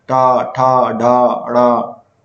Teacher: मूर्धन्य, जिनका उच्चारण मुख्य छत से होता है ना, ऊपर का जो भाग है उससे होता है